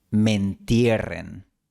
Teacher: La palabra me se fusiona con entierren y se pronuncia mentierren. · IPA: [men'tje.ren]